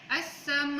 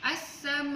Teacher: Imam Hafs juga akan baca dengan at-tawassut iaitu 5 ataupun 4 harakat. Yang pertama untuk 4 harakat untuk kalimah as-sama'u, as-sama'u.